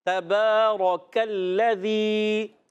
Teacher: کاف باریک، را کو پر کرنا ہے، کاف کو باریک